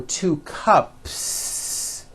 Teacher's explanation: P, p. Well then if you add an S to the word cup to make it plural, the S you add also remains unvoiced